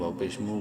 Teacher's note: واو مدہ ہے، میم کو ایک الف برابر لمبا کریں گے